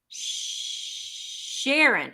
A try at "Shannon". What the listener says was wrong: There's no R, girl. Shannon.